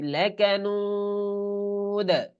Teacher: জবরের একটা আভাস থাকবে কিন্তু জবর উচ্চারণ হবে না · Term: দালে কলকলা